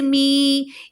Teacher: میم یا زیر می، یا ساکن ما قبل زیر، ایسا یا مدہ کہلاتا ہے، 2 حرکت کھینچ کے پڑھا جاتا ہے